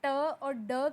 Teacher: आप ट और ड की साउंड के अंदर महसूस करेंगे कि आपके मुंह के अंदर रुकी हुई साउंड एकदम से बाहर निकलती है।